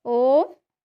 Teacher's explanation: वेदों का जो ओम अक्षर है, ओम, ये जो है प्लुत है और ये त्रैमात्रिक है